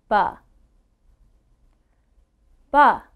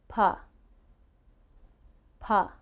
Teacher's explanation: Now for the P sound, that's called an unvoiced sound. If you put your hand on your throat, you should not feel a vibration.